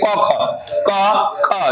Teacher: क ख क ख इसमें कंपन नहीं हो रहा है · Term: अघोष